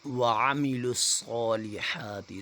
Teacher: صاد کو موٹا پڑھا جائے گا، اگر باریک پڑھیں گے تو سین کی آواز نکلے گی